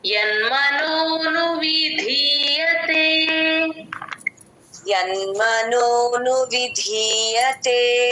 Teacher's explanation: ధీ కి మహాప్రాణం ఉంది గమనించండి తే కి దీర్ఘం కూడా పడాలి